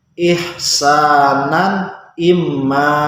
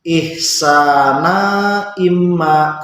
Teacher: tanwin ini bertemu dengan hamzah, hukumnya idhar atau bacanya harus jelas.